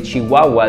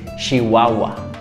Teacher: in Chihuahua, instead of going like ch, they go like sh. They go with a more softer sound